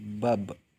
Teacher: Ketika huruf Ba dalam posisi mati, suaranya terdengar mantul.